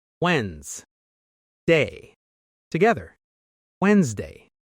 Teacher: This word looks confusing because of the letters, but the sound is actually simple. We don't say the first D.